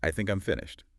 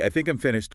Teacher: that falling tone signals certainty. Completion. The rising tone in A makes it sound like a question, like you're unsure.